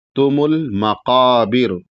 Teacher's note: بڑا قاف ہے تو بڑا قاف کو ادا کرنا ہے، مکابر نہیں کہنا ہے